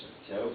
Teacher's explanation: la modification articulatoire de certaines consonnes et essentiellement la vocalisation de L